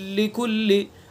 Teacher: पहले हर्फ की कोई सिफत बाकी नहीं रही है, पहले हर्फ का पता ही नहीं चल रहा है, पहला हर्फ बिल्कुल साइलेंट हो गया है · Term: इदगाम ताम